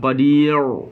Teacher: Ra berada pada gusi kesat, bukan berada pada lelangi. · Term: makhraj ra